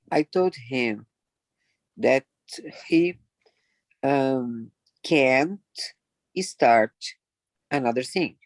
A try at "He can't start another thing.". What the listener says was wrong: Be careful with start. So there was a little bit of a ghost vowel. Start, not start.